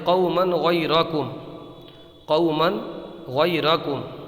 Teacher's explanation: یہ دیکھیے تنوین ہے اور یہ کیا ہے، یہ غین ہے، تنوین کے بعد میں حلقی کا غین آیا ہے، تو یہاں پر اظہار ہوگا یعنی غنہ نہیں کریں گے